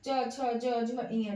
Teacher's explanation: च वर्ग तालु से बोला जाता है